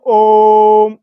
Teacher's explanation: इसमें दीर्घ स्वर से भी ज्यादा समय लगता है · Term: प्लुत स्वर